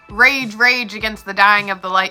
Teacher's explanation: The words rage, rage are 2 stressed syllables beside each other, which makes spondy. Spondy is used for emphasis.